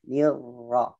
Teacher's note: Ra-nya yang kedua disamarkan pada sifat takrirnya.